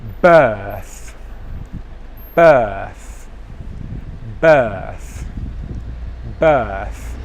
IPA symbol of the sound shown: θ